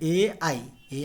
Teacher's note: ए और आई का उचार स्थान कंठ और तालू है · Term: कंठ तालव्य